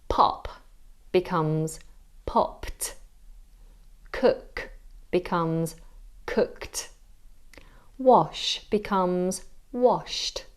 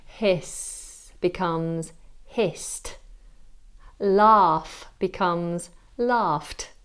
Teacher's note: Ed is pronounced as t. You use this when the base verb ends with an unvoiced sound like p, f, s, ch, sh, or k, but not t.